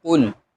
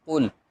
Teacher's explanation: قاف کے اوپر ہونٹوں کو گول کریں گے، اور لام ساکن ہے تو اس کے ساتھ ملائیں گے تو ہو جائے گا قل.